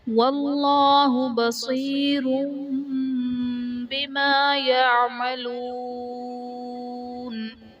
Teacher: واللہ میں اسم جلالت اللہ عز و جل کے لام سے پہلے حرف پر زبر ہے تو یہاں پر اسم جلالت اللہ عز و جل کے لام کو پر یعنی موٹا پڑھیں گے